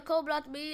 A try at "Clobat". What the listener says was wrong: Clobat, not Colbat. You said Colbat?